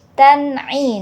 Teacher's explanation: Nah di sini ada eh apa fathatain bertemu dengan huruf Ain hukum bacaannya idhar halqi jadi bacanya jelas tidak boleh dengung